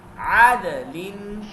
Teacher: عین باریک ہے اور یہ گلے کے درمیان سے ادا ہوتا ہے اور یہ حروف حلقی میں سے ہے.